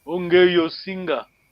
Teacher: But Kikongo being a tonal language, when you're reading, ongeye and osinga comes as a one word. You read just like one word, just one word.